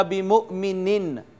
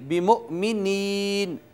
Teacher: تو یہ یوں نہیں پڑھا جائے گا بِمُؤْمِنِن، نہیں بِمُؤْمِنِین، نین وہی ایک الف جتنا اس کو کھینچیں گے، بِمُؤْمِنِین۔